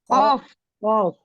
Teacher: ujung lidah bertemu dengan langit-langit bagian lunak